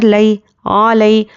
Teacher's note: یا لین ہے، نرمی سے جلد ادا کرنا ہے